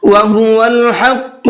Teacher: حا کو حلق سے نکالنا ہے اور قاف کو منہ بھر کے پڑھنا ہے۔